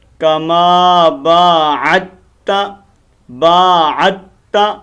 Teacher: عین اور تا کو آپس میں ملانا ہے، عین کو تا کے ساتھ کنیکٹ کر دینا ہے. دال درمیان میں خاموش ہے، ٹھیک ہے، سائلنٹ ہے.